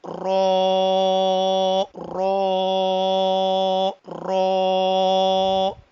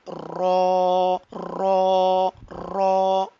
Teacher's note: तो रॉ को पढ़ते वक्त जो इसका स्टार्टिंग साउंड है, यानी इसका जो शुरू वाला साउंड है, शुरू की जो आवाज है, उसमें इसके अंदर रिपीटिंग साउंड आ रहा है, रॉ रॉ रॉ, ठीक है। ये एक वाइब्रेटिंग साउंड आ रहा है, एक रिपीटिंग साउंड आ रहा है। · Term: सिफत तकरार